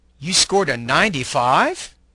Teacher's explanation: A speaker sometimes shows surprise or disbelief by echoing a statement using rising intonation. The rising pitch often occurs on the stressed syllable of the last content word in the statement.